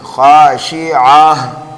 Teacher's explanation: اس گول تا کو ہم ہائے ساکنہ سے بدل دیں گے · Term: وقف بالابدال